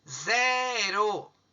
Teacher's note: a sílaba Zé é a mais forte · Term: paroxítona